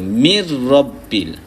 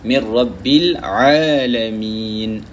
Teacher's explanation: Nun mati tu, dalam hukum nun mati, bila jumpa dengan ra, kita tak bunyikan nun, kita masukkan terus idgham, masukkan terus pada huruf ra bila gunnah, dengan tidak ada dengung